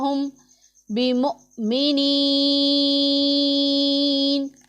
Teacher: ساکن ہے، اس سے پہلے زیر ہے تو یا مدہ، اور وقف کی وجہ سے نون ساکن ہو رہا ہے تو یہاں پر مد عارض ہوگا